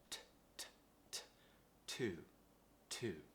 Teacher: Now, remember that the tongue rises to the top of the mouth. And we create some pressure and we release it. Make sure it's nice and relaxed.